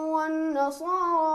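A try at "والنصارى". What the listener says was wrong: वन्नसारा थोड़ा सा खींचे, वन्नसारा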